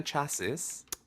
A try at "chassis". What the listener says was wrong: so you don't pronounce the s at the end no it's chassis